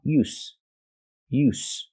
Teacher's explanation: There's no vibration. It's just the s sound, like stars and sleep. S, use. So again, use with a vibration is the verb, and use with no vibration is the noun.